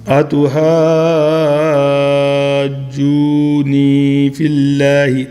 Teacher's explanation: اللہ کے نام سے پہلے کسرہ آ جائے زیر آ جائے تو فی اللہ تو باریک پڑھنا ہے